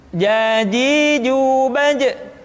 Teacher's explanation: Kesalahan yang sering muncul ketika mengucapkan huruf ja adalah mengalirnya nafas. Ja, ada nafas yang mengalir.